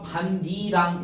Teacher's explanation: 그래서 이 디귿과 니은이 만나서 얘도 뭐로 바뀌어? 니은으로 바뀌는 비음화까지 나타나서 반니랑 이렇게 되는 거야